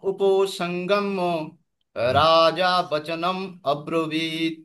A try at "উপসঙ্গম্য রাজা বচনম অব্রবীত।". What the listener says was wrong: সুন্দর, সুন্দর হয়েছে।